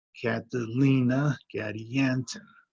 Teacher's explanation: third syllable stressed in both names